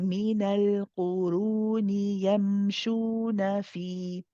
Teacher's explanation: When we continue reading the next words, these are standard mud tabi'is harakatain, 2 counts.